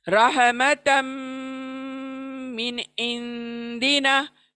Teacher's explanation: तो रहमतम मिन इंदिना, एक नून को मैं फास्ट पढ़ रही हूँ, क्लियर पढ़ रही हूँ, और दूसरे इंदिना के नून को मैं छिपा रही हूँ नाक में। रहमतम मिन इंदिना, मिन को फास्ट पढ़ रही हूँ, देखो।